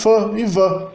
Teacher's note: sons onde o lábio inferior se liga à arcada dentária dianteira superior